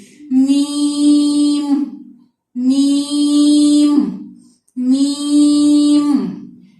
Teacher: یا کو ہم نے کھینچنا ہے، اس کے اوپر بڑی مد آئے گی